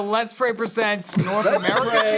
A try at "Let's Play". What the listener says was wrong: play with an L.